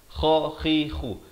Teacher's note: Khi di hujung kerongkong.